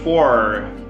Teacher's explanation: Vamos colocar assim esse R do inglês retroflexo